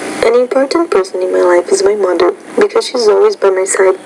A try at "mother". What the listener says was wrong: So it's not mother, but mother. So that TH sound, that's an interdental consonant. You want to work on producing that sound by putting your tongue between your teeth. So not mother, but mother, mother, father, this, that, these, those.